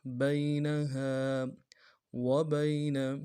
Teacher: بینہا وبین واو کو نون سے ادا کرنا ہے، با کو یا کے سامنے لانا ہے، یا لین بغیر کھینچے پڑیں گے۔ نون کو نون سے ادا کریں گے۔